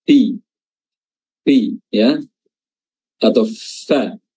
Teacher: Runfi, dan makhraj huruf fa adalah ujung lidah, ujung gigi atas bertemu dengan perut bibir bawah.